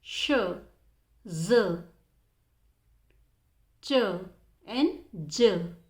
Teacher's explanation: the blade of tongue touches the alveol ridge as well as the body of tongue approaches the hard pallet